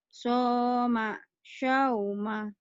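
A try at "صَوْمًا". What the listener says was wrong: Soma, jangan ada anginnya. Syauma, jangan. Sholat, Jangan saya suka soto, saya suka somai, sholat, shopping, anginnya biasa. Enggak, somai, soto, gitu.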